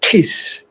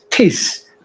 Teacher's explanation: Very strong aspiration. It wasn't there in ancient Greek.